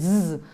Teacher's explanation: suono è fricato perché si sente come una vibrazione quando la lettera viene pronunciata